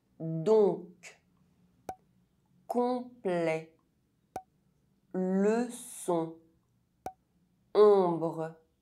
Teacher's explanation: ON and OM are pronounced [ɔ̃]. [ɔ̃] is a nasal vowel.